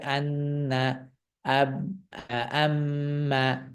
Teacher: কিন্তু নুন এবং মিমের সাথে যখন তাসদীদ যুক্ত হয় তখন আন্না, নাক থেকে, নাকের বাসি থেকে একটি আওয়াজ করতে হয়, এবং সেই আওয়াজটা দীর্ঘ করতে হয় 2 সেকেন্ড, 2 সেকেন্ড সময়, 2 সেকেন্ড দীর্ঘ করে পড়তে হয়, আন্না, আম্মা ইত্যাদি। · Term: গুন্না